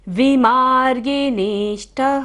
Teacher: विसर्ग है, सारी सांस हमें बाहर छोड़नी है